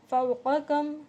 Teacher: حرف لین ہو رہا ہے کیونکہ واو ساکن سے پہلے زبر ہے. کم میں اظہار کر رہے ہیں، غنہ کر رہے ہیں.